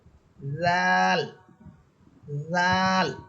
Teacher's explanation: জিহ্বার আগা সামনের উপরের দুই দাঁতের আগার সাথে লাগিয়া স্বাভাবিক আওয়াজে